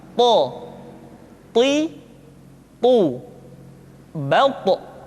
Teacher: To diucapkan dengan menyentuhkan ujung lidah dengan gusi-gusi dua gigi seri bagian atas. Sifat yang dimiliki oleh huruf to yang mesti nampak ketika kita ucapkan adalah sifat al-isti'la dan sifat al-itbaq.